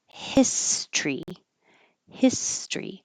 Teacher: we get rid of this o and we make it two syllables